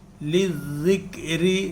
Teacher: زال کی جو آواز ہے وہ بتایا تھا خاکسار نے کہ باریک اور نرم ہے